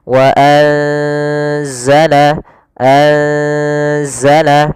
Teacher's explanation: Maka cara membacanya itu kita samarkan nunnya kepada huruf zai. Bukan dibaca wa anzala, tapi juga bukan nggak bisa dimasukkan ke za wazzala, tidak bisa. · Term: ikhfa